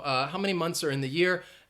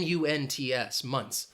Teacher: you might not even hear the th sound it's just so quick